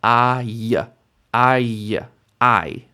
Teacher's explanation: Patach yod, ay, ay, ay. You hear how the vowel sound is combining with the consonant sound to make what's called diphthong, basically a 2-sound vowel.